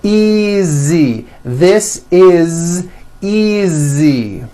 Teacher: the S is like a voiced Z